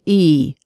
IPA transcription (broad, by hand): iy